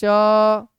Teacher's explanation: इसको तालब श कहते हैं, क्योंकि ये तालू से बोला जाता है